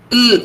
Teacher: Can you feel your tip of the tongue is touching the teeth ridge